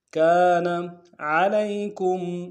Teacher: لام کو یا کے ساتھ ملانا ہے، یا لین بغیر کھینچے پڑیں گے.